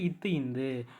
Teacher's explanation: மேல்வாய் பல்லின் அடியை நாக்கின் நுனி பொருந்துவதால் பிறக்குது